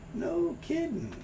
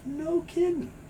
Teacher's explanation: Sometimes the G sound is not made, just get an N sound.